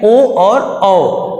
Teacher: कंठ और ओष्ठ की मदद से अक्षर बोले जाते हैं ओ और औ